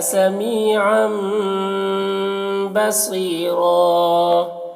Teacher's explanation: را کو پر پڑھیں گے اور وقف کی صورت میں ایک زبر کے ساتھ الف پڑھیں گے